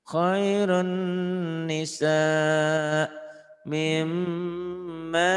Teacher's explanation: Ini idghamnya bigunnah. Idgham dimasukkan, dileburkan disertai dengan dengung. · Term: idgham bigunnah